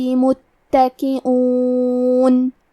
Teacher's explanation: حمزہ اور کاف کے نیچے زیر ہے تو ہم یہ دونوں زیر کو برابر سے ادا کریں گے. کلمت متکئون میں تا پہ تشدید ہے لہذا ہمیں دو حرف کے برابر تا کو پڑھنا ہے